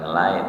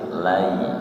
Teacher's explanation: jadi cenderung ke i bukan cenderung ke e